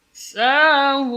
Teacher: Sahud. Hu jelas dari aqsal hal, dari pangkal tenggorokan.